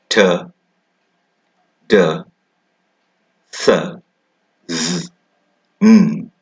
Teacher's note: If you try to make sounds after me, T, d, s, z, n. You will feel how the tip of the tongue touches the alveolar region. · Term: alveolar sounds